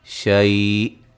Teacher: شی لین ہے، وقفاً بڑی مد کے ساتھ پڑھ سکتے ہیں، حمزہ کی آواز آئے گی اینڈ پہ · حمزہ کو ساکن کریں گے، تھوڑی سی آواز آئے گی